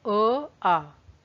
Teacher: अ आ में मुंह का कोई पार्ट टच नहीं हुआ, ये अंदर से आया गले से, तो डेफिनेटली आपकी कंठे ध्वनियां हैं।